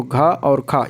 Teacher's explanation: महाप्राण व्यंजन में देखेंगे तो इनके उच्चारण में मुख से अधिक वायु निकलती है और हकार की ध्वनि सुनाई देती है